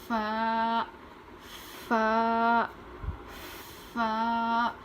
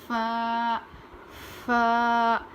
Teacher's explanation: اوپر کے دانت کو نیچے کے ہونٹ پر لگا کر پڑھیں گے